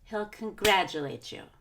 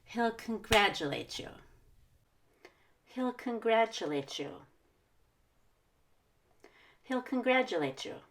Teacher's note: the he is very quick the U is very quick